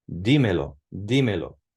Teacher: the emphasis in the pronunciation stays on the third to last syllable